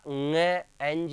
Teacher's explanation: ये पंचम वर्ण है, इसका उच्चारण होगा ङ, एनजी, और नाक से इसका उच्चारण होता है।